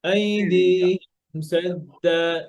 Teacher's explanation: মিম সুকুনের পরে সিন আসলে গুন্না নাই